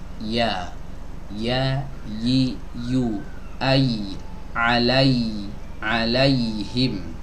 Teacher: Adapun yang ini, ya yang ini ya ghairu maddiyah. Keluar dari mana? Dari tengah lidah ya, didekatkan ke langit-langit atas.